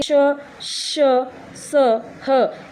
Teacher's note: आ ऊष्म ऊष्म मतलब जिसमें ऊष्मा निकले श श स ह इसमें ऊष्मा यानी गर्म हवा टकरा के मुंह से बाहर आती है इसलिए इसको ऊष्म व्यंजन बोलते हैं